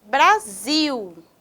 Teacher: é o Zil é a sílaba tônica sílaba mais forte